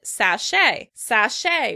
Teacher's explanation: Americans pronounce it sachet, sachet, with stress on the second syllable